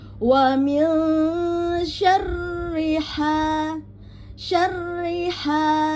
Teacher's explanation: Ha pada tengah tenggorokan, ya, bukan di ha, ya.